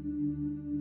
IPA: yː